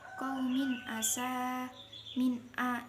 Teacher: ini bacaan idhar halqi sebab kasroh tanwin bertemu huruf ain dibaca jelas.